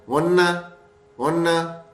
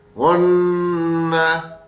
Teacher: ناک میں آواز بھی جائے گی اور رکیں گے بھی تھوڑی دیر تاکہ وہ آواز لمبی ہو